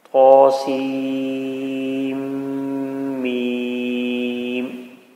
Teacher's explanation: جب پڑھتے ہیں تو عموماً ہمارے منہ سے آواز آتی ہے پڑھنے کی، لیکن بعض اوقات ہم پڑھتے پڑھتے آواز ناک میں لے جاتے ہیں تو اس کو غنہ کہا جاتا ہے۔ تو سیم اور میم کے درمیان میں تھوڑا سا غنہ ہوگا، یعنی کہ آواز تھوڑی سی ناک میں جا کر واپس آئے گی اور پھر دوبارہ آگے اپنا سفر جاری رکھے گی۔